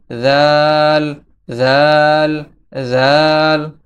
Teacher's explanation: জাল। জালের মাখরাজ হচ্ছে জিহ্বার আগা সামনের উপরের দুই দাঁতের আগার সঙ্গে লাগিয়ে উচ্চারিত হয়। এখানে দেখতে পাচ্ছেন জিহ্বার আগা যখন সামনের দুইটা দাঁত আছে তার আগার সঙ্গে লাগবে, তখন দাল জাল উচ্চারিত হবে।